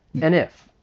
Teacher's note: and we'll get reduced to N. And then we can link it.